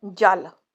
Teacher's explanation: ਲਲਾ ਧੁਨੀ ਨੂੰ ਉਚਾਰਨ ਸਮੇਂ ਜੀਵ ਉਪਰਲੇ ਦੰਦਾ ਦੇ ਅੰਦਰਲੇ ਪਾਸੇ ਨੂੰ ਛੂੰਦੀ ਹੈ। ਜਦ ਤੁਸੀਂ ਬੋਲਦੇ ਹੋ ਜਲ ਤੁਸੀਂ ਨੋਟ ਕਰੋ ਕਿ ਤੁਹਾਡੀ ਜੀਵ ਉੱਪਰਲੇ ਦੰਦਾ ਦੇ ਅੰਦਰਲੇ ਪਾਸੇ ਨੂੰ ਛੁਂਦੀ ਹੈ।